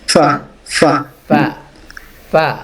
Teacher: সাকিন আফ আফ হ্যাঁ ফা ফা এর মাখরাজ কোথায় না না সামনের দুই দাঁতের ধারালো অংশটা নিচের ঠোঁটের পেটে লাগবে